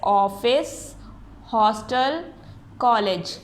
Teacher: विदेश भाषाओं के शब्दों का आमान हिंदी भाषा में अपने साथ अ ध्वनि को लेकर आया है। इसका उच्चारण आ और ओ ध्वनि को मध्यवर्ती है